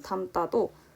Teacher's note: 어감 받침 여기 미음으로 인해서 뒤에 있는 디귿이 쌍디귿으로 발음이 나고 있습니다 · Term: 된소리